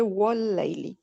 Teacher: हाँ, अब वाव जबर वा होंठों को मूवमेंट करना जरूरी है, अगर नहीं करेंगे तो फिर आप दांत से टच हो जाएंगे होंठ, वाह पढ़ेंगे, गलत है। होंठों को गोल करना है और फिर आपने पढ़ना है वाह, होंठों की गोलाई से अदा होता है